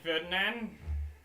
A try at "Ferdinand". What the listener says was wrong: It's not Ferdinand. Ferdinand. There's no D.